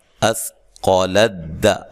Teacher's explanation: قاف کو موٹا ادا کرنا ہے، ٹھیک ہے، لام کو باریک پڑھنا ہے اور دال کو بھی باریک پڑھنا ہے